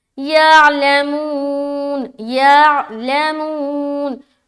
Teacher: मुंह में खींचेंगे, वाव मद्दा हो रहा, बाकी कहीं नहीं खींचना। आइन को प्रॉपर निकालना है और नहीं निकलता तो इसके खूब मश्क करना है।